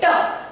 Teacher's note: जब मैंने ट बोला तो ट में मेरी जिह्वा ऊपर जा रही है